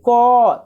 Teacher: क तो कहाँ से आ रहा आवाज, कंठ से आ रहा है